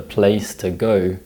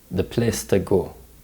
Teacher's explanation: The A and O diphthongs are pronounced as monophthongs in Singapore English.